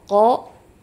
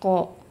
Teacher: Pangkal lidah menyentuh pada langit-langit yang lunak. Sedangkan huruf kaf, pangkal lidah menyentuh langit-langit yang lunak sekaligus yang keras. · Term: huruf qof